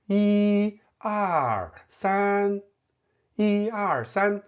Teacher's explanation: the original tone of E is the first tone high flat. If you are counting like E R S E R S one two three or if E is at the end of a word then it stays in the original tone the first tone.